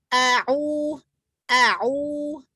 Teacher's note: Berikan sifat syiddahnya pada hamzah.